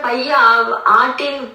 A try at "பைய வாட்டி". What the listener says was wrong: அர்த்தம் புரியறதுக்காகதான் தனித்தனியா பிரிக்கிறாங்களே ஒழிய, ஆனா சேர்த்துதான் சொல்லணும். பைய வாட்டி அப்படின்னு ஒவ்வொரு வார்த்தை தனித்தனியா பிரிச்சு சொல்றது பைய வாட்டி. தான் பிரிக்கிறோம், ஆனா சொல்றப்ப பைய வாட்டின்னு தான் சொல்லணும்.